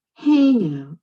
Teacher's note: Hear that first syllable stress, so that's compound noun.